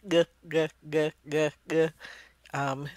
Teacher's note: G is a sound that's in the middle of your mouth. It's produced in the middle of your mouth, and the sound is voiced. And so you can feel those G's inside your throat.